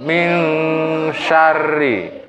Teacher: Nun nya dibaca mati tapi suaranya menjadi samar